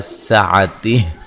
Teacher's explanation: جب وقف کریں گے ہا کو ساکن کر دیں گے، ویسے مد اصلی ہے۔